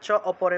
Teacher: আকারটা অ এর মতো উচ্চারিত হবে